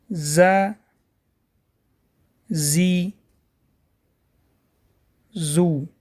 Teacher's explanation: «Зай» произносят, дотрагивая с кончиком языка верхней и нижних резцов. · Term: буква «зай»